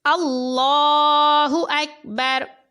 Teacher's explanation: وقف کیا تو را ساکن کر کے پڑھا